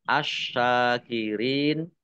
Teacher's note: alif lam syamsiah karena tidak dibaca langsung masuk ke huruf berikutnya yaitu SY ditandai syinnya ada tasdidnya tasdid dibaca dobel syin fathah berdiri Mad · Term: alif lam syamsiyah